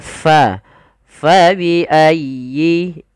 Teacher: jangan sampai kita menggantinya dengan huruf pa. Jangan fa biayyi tapi fa dialirkan nafasnya. Karena huruf fa memiliki salah satu sifat yaitu sifat hames. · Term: sifat hamus